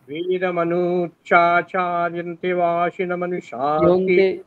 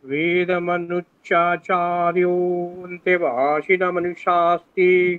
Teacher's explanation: ওকারটা তো দীর্ঘ আছে, ইয়ন্তে একারটা দীর্ঘ আছে, প্রত্যেকটা টেনে টেনে আরো আস্তে বলুন।